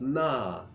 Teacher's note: the word for like a general filler word in Chinese is na fourth tone